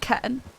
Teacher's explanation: even most Americans, you don't hear them say those T's. They sort of just stop speaking in the middle of things · it's got a glottal stop there